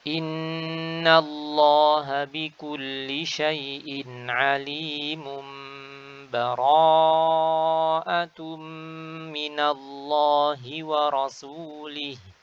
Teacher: Cara pertama adalah kita akan melanjutkan seperti biasa, jadi kita akan mengiklabkan ya, tanwin bertemu ba.